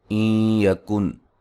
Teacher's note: نون ساکن کا یہاں ادغام مع الغنہ ہے